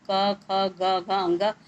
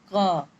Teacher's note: तो क वर्ग का स्थान है कंठ